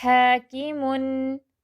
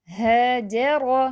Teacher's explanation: ہا درمیانی حلق سے رگڑ کھا کر نکل رہی ہے